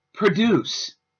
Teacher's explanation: The verb form has the stress on the second half of the word